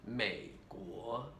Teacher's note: third tone to second tone